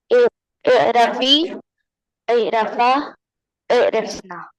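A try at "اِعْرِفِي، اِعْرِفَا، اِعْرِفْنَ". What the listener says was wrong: वहां पे जबर है कि जेर है? वहां पे जबर है कि जेर है? तो लास्ट के तीनों में आपने जबर पढ़ा है, तीनों फिर से पढ़िए, फेमिनिन वाले।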